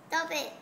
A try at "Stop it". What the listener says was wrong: Don't say stop it, stop it. People thought you say stupid. Stop.